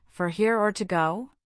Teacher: The intonation usually rises on here and falls on go, making it a clear choice question.